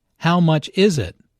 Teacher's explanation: Notice that the main sentence stress falls on is in this question.